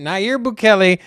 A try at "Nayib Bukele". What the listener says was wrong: You can't even pronounce it. It's not Nayir. It's Nayib. Bukele.